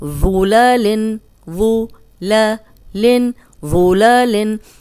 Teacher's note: موٹا بھی ہے اور نرم بھی ہے، اس میں سیٹی کی آواز نہیں آئے گی۔